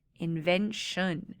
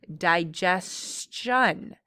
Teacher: So we went from invent to invention. I don't hear the T anymore. I hear sh. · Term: sh sound